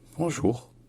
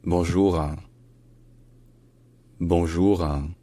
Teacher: le petit e nasalisé à la fin